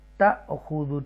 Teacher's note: جھٹکے سے پڑھیں گے کیونکہ حمزہ ساکن ہے